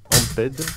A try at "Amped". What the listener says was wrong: Ampt. Ampt. Ampt. Parce que Ampt. Les Américains ils disent pas les AA, ils disent les AE.